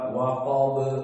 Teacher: Dan di sini ba dijadikan dengan sukun di akhir dari kalimat, maka hukumnya qalqalah. Dan qalqalahnya qalqalah yang sugro, karena dia dalam keadaan sukun dan di akhir dari kalimat.